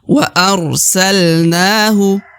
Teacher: wa aralnahu pertama huruf ro sukun dibaca ar wa arsalnahu na dibaca Dua harakat ya karena di atasnya terdapat Alif Alif kecil